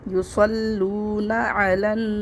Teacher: یہ اس پہ کوئی بھی حرکت نہیں ہے، اس لیے ہم اس کو نہیں پڑھیں گے. تشدید کا کام ملانا ہے، ہم لام کو فوراً نون مشدد سے ملا دیں گے. لام نون زبر لن، پیچھے سے ملا کے پڑھیں گے.